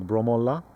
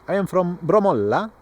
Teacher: the last syllable is sometimes extended and more powerful